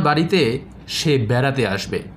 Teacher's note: আবার আমার বাড়িতে সে বেড়াতে আসবে, অর্থাৎ এই বেড়াতে শব্দটিকে আমি মেনশন করছি, এজন্য এই বেড়াতে শব্দটিকে আমি একটু জোর দিয়ে বা একটু উচ্চ গ্রামে উচ্চারণ করলাম।